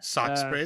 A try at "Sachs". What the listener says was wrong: Again, it sounds like you're saying the Norwegian word for scissor. You know, socks.